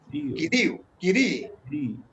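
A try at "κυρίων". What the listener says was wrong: Anímense que hay una omega ahí, hombre. ¿No han visto la omega? Hay una omega.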